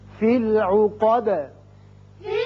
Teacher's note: آیت ختم ہو رہی ہے، دال ساکن کر دیں گے، دال کی صفت قلقلہ ادا ہوگی۔